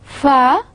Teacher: it is a fricatives, again because a partial air blockage is there, fricatives, and plus because it is not shaded, so it is a voiceless sound. · labiodental, because I am using my lips and teeth